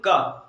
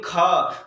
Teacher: अगर हम का बोलेंगे का तो अल्प प्राण आ जाएगा, अगर हम खा बोलेंगे खा तो महाप्राण आ जाएगा